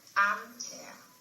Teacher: Main stress on the first part.